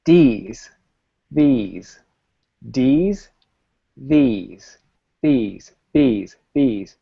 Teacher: These, these, these, these, these, these, these. Even when I go fast, my tongue comes right up and blocks the air. It might not come all the way out like this, but it blocks the air, and that's what allows you to say these.